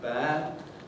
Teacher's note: Why should one think that a consonant like D, which is potentially voiced, it is not invariably voiced? If I say something like bad, I don't have any voicing